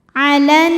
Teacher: Alan huruf nun dihukumi dengan ghunah musyaddadah karena nun bertasydid. Cara bacanya dengung bunyi n-nya tahan sampai ada suara masuk hidung kurang lebih dua harakat.